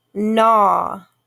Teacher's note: GNAW, but we don't hear the G. So GN together make the N sound.